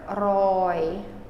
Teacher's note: So this O is held out longer. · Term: Long O